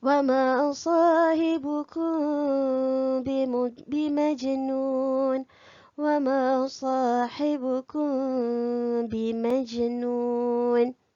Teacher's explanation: Ingat, mim jangan dirapatkan sepenuhnya bibir ya.